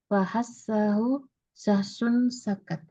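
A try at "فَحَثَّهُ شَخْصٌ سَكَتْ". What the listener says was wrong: Kho-nya syakhsun sakat. Kho itu setelah shin itu kho. Syakhsun sakat. Jadi bacanya bukan syakhsun sakat. Ya, kho, kemudian shad, kemudian sin. Yang tertukar. Fahassa. Perhatikan setiap hurufnya. Fahassahu.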